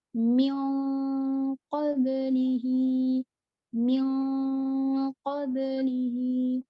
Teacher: Yang kedua, nun sukun bertemu dengan ko. Nah, kalau ko, karena makhrajnya ko itu tebal atau isti'la, maka nun sukun juga harus mengikuti isti'lanya atau tebalnya.